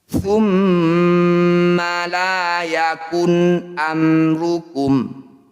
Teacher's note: Idhar artinya jelas, syafawi artinya bibir. Bunyi mim sukun dibaca jelas, rapatkan bibir. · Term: idhar syafawi